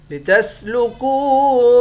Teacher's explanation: کاف کو واو کے ساتھ ملا کر واو کو ایک الف کے مقدار کھینچیں گے، واو حروف مدہ ہے۔